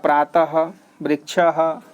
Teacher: last में विसर्ग का लगा है तो उसका जो उच्चारण स्थान हो जाएगा कंठ